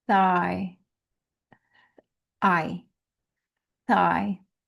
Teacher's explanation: Now this is weird because it's spelled THIGH. You don't even hear the GH. You just hear a long I.